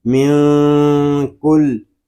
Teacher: نون ساکن میں اخفا ہوگا کیونکہ نون ساکن کے بعد حروف اخفا میں سے کاف آ رہا ہے